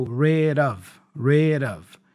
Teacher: So the D for rid connects with the vowel O for the preposition of, and it has that flap sound, da da da da.